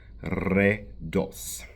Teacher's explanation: the R in Bulgarian is rolled